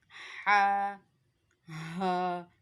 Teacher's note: हा जो है वो हलक के दरमियान वाले हिस्से से अदा होगा।